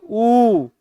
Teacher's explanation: ओठ क्या करेगा सर्किल बनाने का काम करता है · जैसे ही बोलेंगे ऊ, तुरंत ओठ सर्किल बनाना शुरू कर देगा। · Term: ओष्ठ